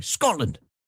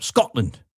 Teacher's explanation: There's a glottal stop there. No T, just a glottal stop.